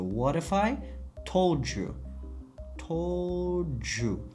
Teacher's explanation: d tovushimiz u ga qo'shilganligi uchun nima bo'lib ketyapti? Bizda ju bo'lib ketyapti